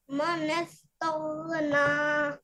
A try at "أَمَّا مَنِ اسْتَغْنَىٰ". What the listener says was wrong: ما نس تغنى یہاں سے پڑھیے اوہو دوبارہ کوشش کریں علی مدہ بھی تو کرو نا بھائی کیا کر رہے ہو جی